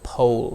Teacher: H and together what do we get o o o so first I say uh and then I round my lips